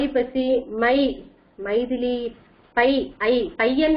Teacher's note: ஐ என்ற எழுத்து தன் 2 மாத்திரை அளவிலிருந்து 1.5 மாத்திரை அல்லது 1 மாத்திரையாக சில நேரங்களில் ஒலிக்கும். இதுதான் ஐகார குறுக்கம் என்று சொல்வார்கள்.